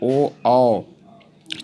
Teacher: कंठल से ए। कंठ ओष्ठ इसमें कंठ और ओठ दोनों का मिलकर उच्चारण से कंठोष्ठ कहते हैं